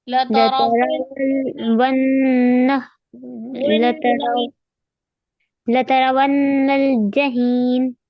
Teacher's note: ارے واو کو نون میں ملائیے، غنہ کریے